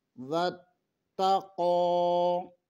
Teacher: تا مشدد ہے، اسے 2 دفعہ پڑھنا ہے۔ قوف کے اوپر کھڑی زبر ہے، اسے بھی ایک الف کے برابر کھینچنا ہے۔